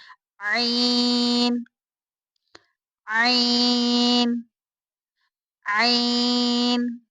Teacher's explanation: عین حلق کے درمیان والے حصے سے ادا ہوتا ہے۔